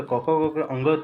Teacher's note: कवर्ग का उच्चारण स्थान जो होता है ये कंठ होता है